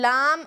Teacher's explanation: जबान का किनारा ऊपर के मसूड़ों से मिलकर अदा होता है